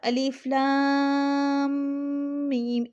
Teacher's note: جو کی یہ غنہ تھا جو ہم نے میم پر کیا، تو تشدید کی وجہ سے غنہ ہوتا ہے